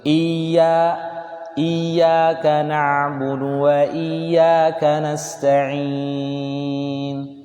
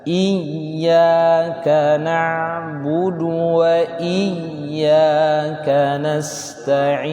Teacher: Yang kemarin dalam tasydid itu ada nabr. Ya, nabr itu mengayunkan sehingga dapat tasydidnya. Jadi tidak mengalir.